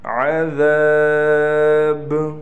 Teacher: عذاب، با پر قلقلہ کیا جائے گا